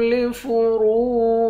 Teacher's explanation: والذین هم لفروجهم، ذال کو یا کے ساتھ ملا کر یا کو ایک الف کی مقدار کھینچیں گے، یا حروف مدہ ہے۔ را کو واو کے ساتھ ملا کر واو کو بھی ایک الف کی مقدار کھینچیں گے، واو بھی حروف مدہ ہے، اس را کو موٹا پڑھیں گے۔